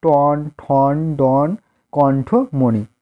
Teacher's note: জিহ্বার অগ্রভাগ তালুর মাঝখানে উঠে স্পর্শ করে উচ্চারিত হয়